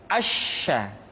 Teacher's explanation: Sya dikeluarkan dengan cara mengangkat tengah lidah kita ke langit-langit